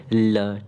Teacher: जिह्वा का अग्रभाग मसूड़ों को क्या करती है, मसूड़ों को छूता है, ठीक है, मसूड़ों को छूता, और वायु कैसे जिह्वा के दोनों पार्श्वों से निकलती है, तो पार्श्व व्यंजन कहलाता है, ठीक है। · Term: पार्श्विक व्यंजन